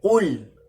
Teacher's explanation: Sedangkan huruf qaf pada surah Al-Ikhlas ini ya menggunakan syakal dhammah. Dhammah yang mana cara membacanya dengan indhimamu syafatain, menggabungkan kedua bibir, memonyongkan ketika dibaca qul